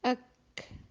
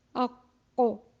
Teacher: زبان کا جو جڑ ہے وہ تو دونوں کیفیت میں اٹھی، لیکن ایک میں آواز باہر کو خارج ہوئی اور ایک میں آواز جو ہے منہ میں بھر گئی · ایک حرف جو کاف ہے وہ باریک پڑھا جائے گا اور قوف جو ہے وہ موٹا پڑھا جائے گا